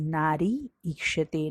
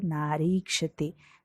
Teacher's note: ई plus ई दोनों दीर्घ ई अगर एक दूसरे के सामने आते हैं तो दोनों मिलकर ही दीर्घ ई ही होते हैं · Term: सवर्ण दीर्घ संधि